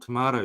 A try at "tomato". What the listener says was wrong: Instead of the T, you say a D.